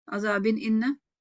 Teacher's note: وقف کریں گے تو قلقلہ کبرا ہوگا، اور جوڑیں گے تو اظہار ہوگا کیونکہ تنوین کے بعد حمزہ آ رہا ہے، اور حروف دوسرا حلقہ.